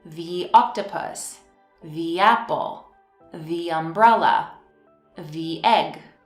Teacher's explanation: when the comes before a vowel sound, we pronounce it as a long thee